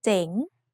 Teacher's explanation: The tone mark Mai Chattawa gives Jeng a rising tone.